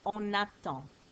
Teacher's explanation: I can now hear the N in on, which is normally silent.